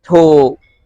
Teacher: low tone with a long vowel